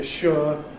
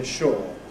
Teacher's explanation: What used to be ‘sure’ [ ʃʊə ] is increasingly [ ʃɔː ]. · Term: Loss of / ʊə /